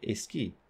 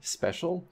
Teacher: And Spanish phonotactics is a little bit different from English phonotactics in that they cannot have SC clusters in onsets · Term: Spanish A apenthesis